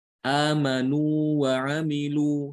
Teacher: Ini hati-hati, jangan sampai wawu yang pertama diidghamkan ke yang kedua. Jangan dibaca amanu wa amilu, jangan demikian. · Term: mad tamkin